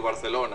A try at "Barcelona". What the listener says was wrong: And I was hoping you would let out the theta. I said I was hoping you would let out the theta. Spanish.